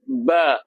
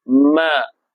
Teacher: Ba ni tekanan dia kuat sikit. Ba. Tapi mim ringankan tekanan dia. Ma. Bukan macam M Melayu nak, bukan Melayu.